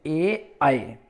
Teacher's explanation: कंठ और तालु, कंठ को भी मिलते हैं, तालु से भी मिलते हैं, तब उनका उच्चारण होता है। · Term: कंठ तालव्य